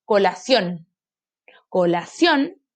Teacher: se carga la voz en la última sílaba